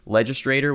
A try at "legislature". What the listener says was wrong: You're saying legislative. There's an R where it shouldn't be.